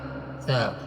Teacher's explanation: سا کو ادا کرنے کے لیے زبان کی نوک کو اوپر سامنے کے 2 دانتوں کے کنارے کے ساتھ لگائیں گے۔ سا کو معتدل پڑھا جاتا ہے۔